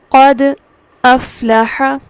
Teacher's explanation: دال پر چند لمحات کے لیے رکیں گے، سانس نہیں توڑیں گے، آواز کو روکیں گے اور سانس کو جاری ہی رکھیں گے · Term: سکتہ